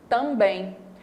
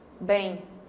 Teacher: Só que esse M, na hora da fala, ele tem um sonzinho de I. É como se a gente falasse essa sílaba assim, ó. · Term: semivogal